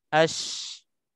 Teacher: Kita ulang ash ni untuk kita nak tahu lidah tengah lidah, bahagian tengah lidah tersentuh dengan langit kita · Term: shin